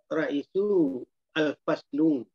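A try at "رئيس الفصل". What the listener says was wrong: Jangan pakai al. Kata Pak Saragi jangan begitu.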